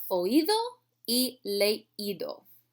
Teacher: I want to say leido. So again, I have to break the diphthong by accenting that I.